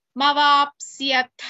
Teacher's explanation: ಥ at the end is ಮಹಾಪ್ರಾಣ · Tha at the end is mahaprana.